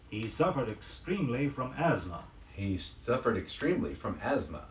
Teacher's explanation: Don't bother to sound the TH sound in asthma, spelled A-S-T-H-M-A.